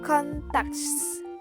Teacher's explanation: Contacts is produced or is produced becomes contact without S. The S sound is deleted